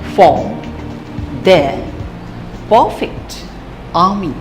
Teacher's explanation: R is spoken very softly, just as form, there, perfect, army, etc.